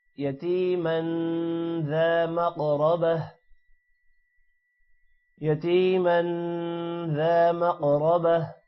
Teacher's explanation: ذا الف آ رہا ہے ذال لمبا ہوگا. مقربہ قوف پر قلقلہ ہے اور قوف موٹا بھی ہوگا، را بھی موٹا ہوگا اور لاسٹ میں جو تا ہے وہ ہا میں کنورٹ ہو جائے گا.